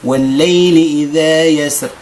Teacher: في الراء ديال يسر وقفا ووصلا ترقق